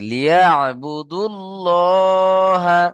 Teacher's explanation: ওয়ামা উমিরু ইল্লা লিয়াবুদু, এখানে দাল গিয়ে যুক্ত হবে লামের সাথে